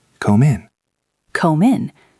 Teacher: Come. And the next word is in, so we link the M to the I.